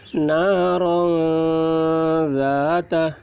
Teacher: را کے اوپر دو زبر کی تنوین ہے، تو تنوین کے بعد حروف اخفا میں سے ذال آ رہا ہے، اس لیے تنوین کی آواز کو ناک میں چھپا کر پڑھیں گے، اس کو اخفا کہتے ہیں۔